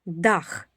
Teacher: Д - твердий приголосний перед буквою А.